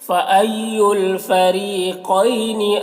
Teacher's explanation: قوف کو پر پڑھیں گے اور یہاں پر یالین سے نرم آواز کے ساتھ جلد پڑھیں گے